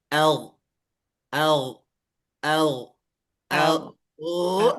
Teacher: tidak ada mengalir udara tapi itu adalah suara sehingga dia memiliki yang namanya sifat ee arrikhwah atau rakwah. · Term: mengalir suaranya